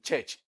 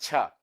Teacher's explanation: it is represented by the combination of the ta sound and the sha sound. So we call it cha. · That is voiceless post-alveolar affricate